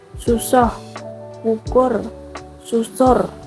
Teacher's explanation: Vokal ini pengucapannya menyerupai vokal O dan biasanya yang dibaca miring bagian vokal yang akhir. Lambang ejaan yang dipakai adalah U. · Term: vokal U miring